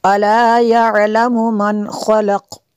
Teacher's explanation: أَلَا يَعْلَمُ مَنْ خَلَقَ، قاف، یہاں پہ اگر وقف کریں گے تو وقف مطلق کی شارٹ فارم ہے، وقف کریں گے تو قاف پہ قلقلہ ہوگا